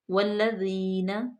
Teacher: تو الف لام جو ہے اس کو ہم سائلنٹ کریں گے، واو کو لام میں ڈائریکٹ ملا دیں گے، لام مشدد ہے اور اس کو ہم موٹا نہیں کریں گے بلکہ باریک ہونٹوں کو بکھیر کے چوڑا کر کے والذین، ذال کو بالکل نرمی پہ، یہاں پہ سیٹی کی آواز بالکل نہیں آنی چاہیے۔ والذین، ذی کو ہم نے لمبا اس لیے کیا کیونکہ یا مدہ ہے، یا ساکن ما قبل مکسور ہے تو یا مدہ ہوگی۔